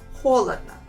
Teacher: only the first one I pronounce as a real O sound. The other 2 letters I pronounce them as A. Холодно. And let's try to answer the questions.